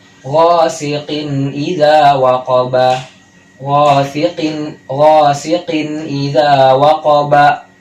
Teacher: tidak ada dengung, transisinya cepat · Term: izhar halki